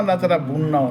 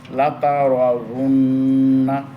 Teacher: ওয়াও 2 ঠোঁটে খালি জায়গা, মিলবে না, মানে ঠোঁট মিশবেই না, ঠোঁটের থেকে বের হবে কিন্তু 2 ঠোঁট মিশবে না।